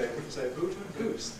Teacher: we don't really bother very much with the lips. They are sort of loosely rounded.